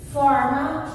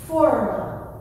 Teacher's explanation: Se escreve igual, mesma coisa, diferença na pronúncia, som aberto, som fechado.